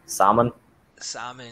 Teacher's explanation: I would say Sam, salmon with an It's ad. because there is an L, but I think in this case we wouldn't pronounce the L. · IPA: / ˈsæm ən /